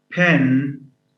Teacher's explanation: In a word like pen, this is accompanied by a puff of air. So the p is aspirated because it occurs at the beginning and is followed by a vowel, in which case it's aspirated.